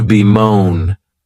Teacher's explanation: for better pay the next verb is to be moan and this verb has two syllables and the stress is on that second syllable